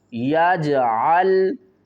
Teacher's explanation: الم یجعل، الم یا کو جیم سے ملائیں گے، جیم ساکن ہے، اس کے اوپر قلقلہ کریں گے